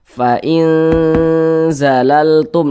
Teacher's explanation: jadi suaranya itu kita tahan kita panjangkan sejenak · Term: didengungkan